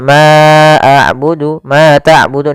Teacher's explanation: Di sini ada bacaan mad thay'i, yaitu fathah bertemu dengan alif. Untuk panjang yang kita panjangkan sepanjang dua harakat.